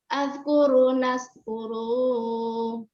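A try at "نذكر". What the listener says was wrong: Jangan panjangin di situ, Bu. Nazkuru. Jangan panjangin, nggak panjang di situ.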